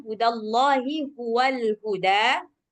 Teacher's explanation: H yang dari pangkal tenggorokan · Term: H besarnya